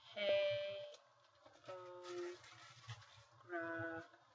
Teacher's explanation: this G is next to an E so it sounds like an H